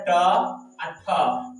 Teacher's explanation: ट का उच्चारण मूर्धा, ठ के उच्चारण मूर्धा